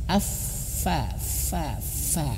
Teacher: fa itu mengeluarkan angin makhrajnya di sini bibir bawah menyentuh ujung gigi seri atas